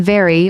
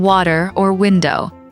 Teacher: Another one is the V and W sound. For V, your top teeth touch your bottom lip like in very or W, your lips make a small circle like in water or window